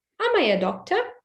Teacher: in the question am is are are stressed so be careful the intonation goes up at the beginning